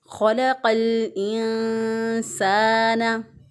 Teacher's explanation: इसलिए हमने यहाँ पर इसको इख्फा किया। हमने नून साकिन की आवाज़ को पोशीदा रखते हुए, गुन्ना करते हुए एक अलिफ के बराबर नाक में आवाज़ ठहराते हुए अदा किया।